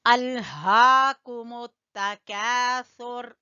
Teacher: لام کے اوپر قلقلہ بالکل نہیں کرنا، ال نہیں پڑھنا، ال ادھر ہی آپ کی زبان ٹک جائے